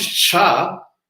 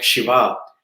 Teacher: And when we come to the sibilants, the first sha is pronounced in like the cha. So we have to use like the part of the mouth which is just above our throat for chanting the sha, like Shiva.